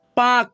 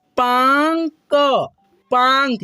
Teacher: और इसका उच्चारण हम लोग करते हैं नाक के रूप में, मुंह और नाक के दोनों के मेल से इसका उच्चारण हो पाता है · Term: चंद्र बिंदु की मात्रा